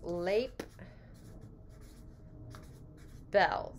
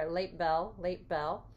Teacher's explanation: the final sound on late becomes more like the first sound that follows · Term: assimilation